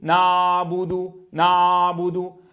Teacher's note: منهم من يجعل صوت العين عائما فيقول نعبد نعبد ففخم الصوت ولم يرتكز على المخرج، والبعض يقول نعبد فيقطع صوت العين مشبها إياها بالهمزة، وكلاهما خلل.